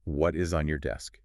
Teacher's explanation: Native speakers often soften the T at the end.